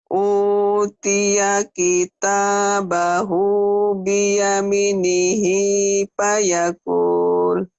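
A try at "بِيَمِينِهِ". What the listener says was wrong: Mi-nya kan panjang ada ya mati ya. Kurangnya itu tadi. B-nya pendek. Kenapa B-nya panjang? Kan B-nya nggak ada yang manjangin.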